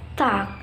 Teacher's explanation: the T at the beginning of talk is accompanied by an audible outrush of air, or a little like a very brief ha sounds known as aspirations.